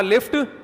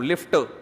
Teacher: لفٹ پہ قلقلہ نہیں ہے, میں خود ہی کر رہا ہوں